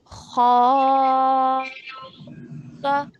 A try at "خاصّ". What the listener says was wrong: But stretch for 4 counts before you join the sad mushaddad.